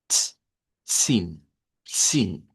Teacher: Es algo como zin, pero esa Z no es ni Z ni es S. Es el africado TS. Ts, sin, sin.